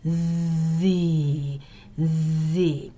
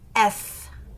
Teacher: index fingers in your ears and repeat the above sounds now you should hear a low buzzing sound when you articulate Z and V but you can almost hear nothing for the other two sounds